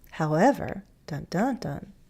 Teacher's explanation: a little fall rise is very common on an introductory word or something like a transition phrase